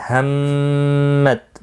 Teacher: ہمت میم مشدد پر غنہ ہوگا